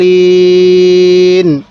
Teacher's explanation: এই দলের মধ্যে চার আলিফ টান দিব